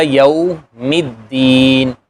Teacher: لام جو ہے وہ اس لیے نہیں پڑھا جا رہا کہ بعد میں حروف شمسیہ میں سے دال آ گیا